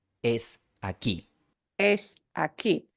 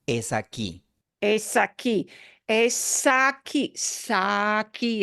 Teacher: that S from es, that letter S, gets moved really into that word aquí